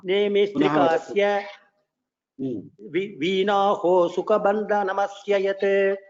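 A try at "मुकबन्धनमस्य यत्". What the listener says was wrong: It is not Sukabandhanam. Mukabandhanam.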